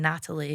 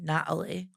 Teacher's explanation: you speak with a glottal stop. It's so common.